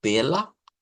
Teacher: más fuerte este sonido se le conoce como a media centralizada la a media centralizada es con la lengüita no hacia la parte abierta de la boca sino como hacia el centro